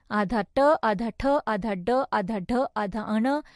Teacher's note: मूर्धन्य यानी कठोर तालु के आगे के भाग से